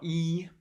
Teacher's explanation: in the hi front region of the vowel space the good vowel is the unrounded vowel e